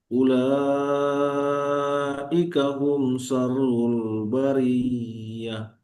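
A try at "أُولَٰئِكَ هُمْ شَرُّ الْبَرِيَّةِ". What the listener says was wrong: Bagus. Tapi terlalu panjang tadi. Bariyah. Ulaika hum syarrul bariyah. Seperti berjalan ya.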